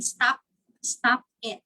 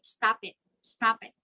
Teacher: you connect p and the i